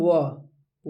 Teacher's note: व जो है दंतोष धनिय है। दांत और ओष्ठ दोनों से इसका उच्चारण होता है।